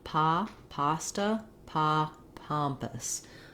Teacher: my lips are just relaxed there's no rounding